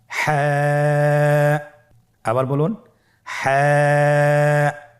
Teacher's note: হাফটি উচ্চারিত হবে কন্ঠনালী মধ্যখান হতে গলা চিপে ধরে আপনি উচ্চারণ করুন